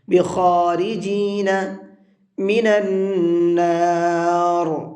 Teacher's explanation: نون کے اوپر تشدید ہے، غنہ کریں گے